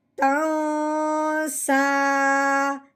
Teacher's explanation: صرف اپنی آواز نیچے کو لے کے آنی ہے، جس سے ہمیں یہ معلوم ہو جائے گا کہ بات یہاں پہ مکمل ہو گئی ہے۔ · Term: وقف